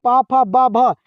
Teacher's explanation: ब जो बोला जाता है वह ओष्ठ की सहायता से बोला जाता है।